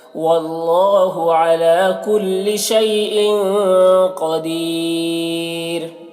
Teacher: واللہ اللہ کو پر پڑھیں گے، علی لام میں کھڑا زبر ہے، ایک الف کے برابر کھینچ کر پڑھیں گے. کل شیء شیء میں جو یا ہے اس یا کو یا لین کہتے ہیں، اسے بھی نرم آواز کے ساتھ جلد پڑھیں گے.